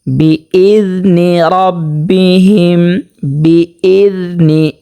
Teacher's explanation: দালটা উচ্চারণ হবে 13 নাম্বার মাখরাজ হতে, জিহ্বার আগা উপরে 2 দাঁতের আগার সাথে লাগিয়ে, যেমন বিইذনি রাব্বিহিম, বিইذনি, এখানে জিহ্বার আগা উপরের 2 দাঁতের আগার সাথে লাগবে যখন আমরা জালটা উচ্চারণ করব।